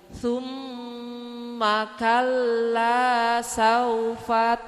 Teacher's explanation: rongga hidung kita ini kita tekan dikit keluar enggak dari rongga hidung kita untuk bacaan gunah